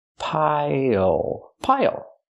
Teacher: Use the dark L at the end. It changes the vowel.